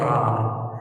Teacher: Jadi ditaruh sesuatu di sini atau suruh lidah dia naruh sini ujungnya di sini kan, letaknya roh itu kan di atas ujung lidah kan, jadi supaya kena itu getarkan